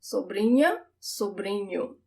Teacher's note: The sound of the NH, it's also not the tip of my tongue that touches the roof of my mouth. Sobrinha. It's the middle of my tongue.